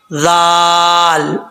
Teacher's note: زبان کا سرا اوپر والے دانتوں کے کنارے، اندرونی کنارے سے لگے گا تو ذال پڑھا جائے گا بغیر سیٹی کے